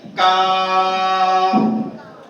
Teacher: क्या है काफ का मखरज? ज़बान की जड़ और तालु के सख्त हिस्से से अदा होता है। यहाँ दो चीजें, ज़बान की जड़ और तालु का सख्त हिस्सा। · यहाँ दो चीजें, ज़बान की जड़ और तालु का सख्त हिस्सा। तालु का सख्त हिस्सा किधर आता है? आगे आएगा, यानी हम आगे की जानिब भी आवाज निकलेंगे इसकी।